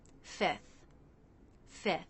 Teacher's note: You might sometimes hear a native speaker simplify this by dropping the F before the TH.